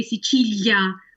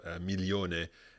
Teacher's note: And Sicilia is one of those. Some people could say Sicilia with a stronger L, and for learners that could sound like a y sound.